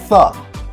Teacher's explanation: interdental sounds, which means your tongue goes between your teeth, like the sound Th.